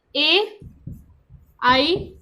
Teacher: कंठ और जो तालु मिलता है तो ए और आई का निर्माण होता है, ठीक है। तो हम कह सकते हैं इसको कंठ तालव्य।